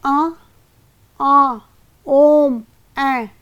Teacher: पर हम स्वर कैसे उच्चारित करते हैं अनुनासिक उच्चारण के समय जब कौवा जो गले में होता है वो बीच में लटका रहता है और इसी के फल स्वरूप वायु का कुछ भाग नाक से निकलता है